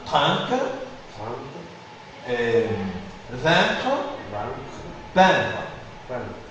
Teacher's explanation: la voyelle est un peu plus allongée en syllabes toniques suivie de n'importe quelle consonne.